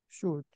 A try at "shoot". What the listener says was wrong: Bravo.